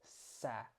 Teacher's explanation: When you say s like this, your tongue is near the front of your teeth